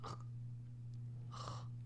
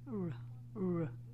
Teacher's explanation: we have two sounding R in French. One, the guttural one, is R. The other one is softer, just like in English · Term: guttural R